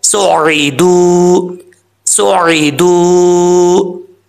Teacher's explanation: یہاں پر واو ساکن ہے، واو ساکن سے پہلے پیش ہے دال کے اوپر، تو اس کا مطلب یہ واو مدہ ہے، تو اس کو ایک الف کی مقدار لمبا کر کے پڑھا جائے گا